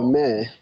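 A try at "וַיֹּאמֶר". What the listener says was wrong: Right, and let me hear that resh at the end, va yomer.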